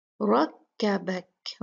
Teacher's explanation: را ہیوی ہوگا، مفخم ہوگا کیونکہ اس پہ فتحہ ہے